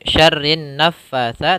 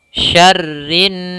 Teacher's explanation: tidak langsung syarrin naffatsa, tapi ditahan suara n-nya. Syarrinna 2 harakat. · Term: gunnah